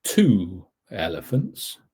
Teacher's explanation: the ooh sound then transforms that liaison to a w going into elephants